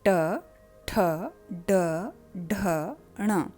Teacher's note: जहाँ पे आपकी टंग टर्न करके पीछे की ओर मुड़कर जब ऊपर माउथ में टच करती है, उस जगह को मूर्धा कहा जाता है